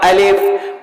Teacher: الف کا مخرج جوف دہن یعنی منہ کا خالی حصہ، الف ایسے نکلتا الف۔